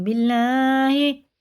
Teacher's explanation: اللہ کا لام زیر سے باریک پڑھیں گے